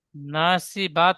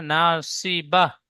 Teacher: গোল তায়ের উপরে থামতে হলে ناصبة সেটি হা সাকিন করে পড়তে হয়। তো আমি আয়াতের শেষে গোল তায়ে থামছি, ناصبة হা সাকিন করে পড়বো।